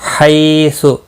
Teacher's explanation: حی یا لین ہے، تھوڑا نرمی کے ساتھ کھینچ کر ادا کریں گے۔ حیث خا مستعلیہ، اخرجو اس کو ہلانا نہیں، مستعلیہ ہے، پر پڑھا جائے گا، را زبر کی وجہ سے پر ہوگا۔